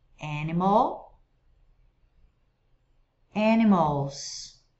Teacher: Animal, o L precisa ir para o céu da boca